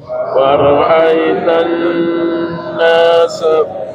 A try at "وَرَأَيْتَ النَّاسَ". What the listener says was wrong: masih ada yang baca waraitan nas, ingat nun sukun dikasih gunnah, didengungkan waktunya lebih lama daripada mat biasa. Jadi waraitan nas, waraitan nas, bukan waraitan nas, bukan waraitan nas.